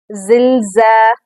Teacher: سیٹی کی آواز آنی چاہیے زا میں